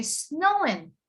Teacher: it's anything ing i don't pronounce the g instead i would say snowin